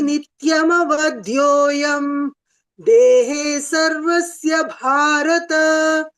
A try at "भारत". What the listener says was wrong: Don't drag the Bharata. Bhagini, don't drag the Bharata. Dehe sarvasya Bharata. Bagini, Uttamam, you are reciting very nicely, but that end, no, you see whether it is Hrisva or Dirgha. It is Hrisva. So you are saying Brhasi.